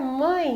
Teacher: Um ditongo, ele vai ficar junto, né? Porque ele é um ditongo nasal e ele é decrescente do maior para o menor